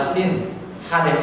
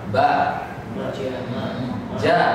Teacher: Hamas keluar nafasnya. Jahar tidak keluar nafasnya.